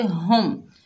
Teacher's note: तो पढ़िए दा, हुदा। हा के ऊपर पेश है, आगे मीम साकिन है, हा को मीम से मिलाएंगे, हा को सीने से अदा करेंगे।